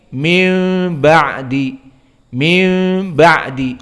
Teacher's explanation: Nun makhrajnya lisan, wal ba makhrajnya syafah, diganti nun menjadi mim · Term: iklab